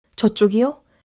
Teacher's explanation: Rising intonation makes it a confirmation check.